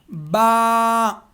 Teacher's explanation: با نکلے گا ہمارے جو دونوں ہونٹوں کے جو گیلا حصہ ہے، ایک تو خشک حصہ ہوتا ہے ڈرائی حصہ، وہاں سے نہیں، دونوں ہونٹوں کے جو گیلے حصے وہ آپس میں ٹچ ہو گئے تو با ادا ہوگا